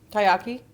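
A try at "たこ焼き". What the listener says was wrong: No, there's another syllable in the middle. Takoyaki.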